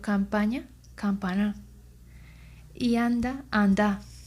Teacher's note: la fuerte nasalización de las vocales que anteceden a las consonantes M y N